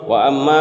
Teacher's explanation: میم مشدد ہے اس لیے گنہ ہوگا، اور میم کے اوپر مد ہے، یہ مد کو کھینچ کر پڑھیں گے، مد منفصل ہے۔